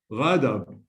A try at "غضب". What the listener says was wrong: غضب. Okay, you cannot pronounce the dha as da. You pronounce it. You are pronouncing it as da. غضب. غضب.